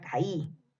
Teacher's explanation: Caí tiene una vocal abierta más una vocal cerrada, que es la I tildada. En este caso la separo en diferentes sílabas. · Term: hiato acentual